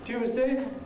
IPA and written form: ˈtjuːzdeɪ (Tuesday)